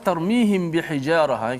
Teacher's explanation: mim mati bertemu dengan ba Oke kita baca secara Ikhfa Syafawi itu kita kena panjangkan kadar dengung d1dan yang kedua pastikan mulut kita itu sentuh bibir kita secara